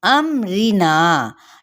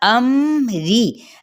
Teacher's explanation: रा बारीक पढ़ा जाएगा ज़ेर की वजह से